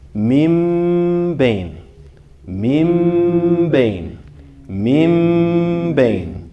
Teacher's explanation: you should still hear the ghunna, but the letter you're pronouncing should sound more like a meme than a noon. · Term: iqlab